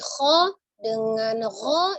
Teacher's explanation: dengan Kho itu kan dari tenggorokan bagian atas ada getar ya kalau kita pengucapan yang benar ada getar di tenggorokan atasnya